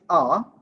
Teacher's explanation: when we say ah see lips are spread all right so ah is a back open unrounded vowel or so it's a back sound it's an open sound and